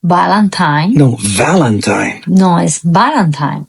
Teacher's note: the fourth dead giveaway is changing V for a B